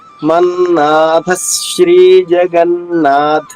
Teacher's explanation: థ పైన ధ పైన అఘాత వస్తుంది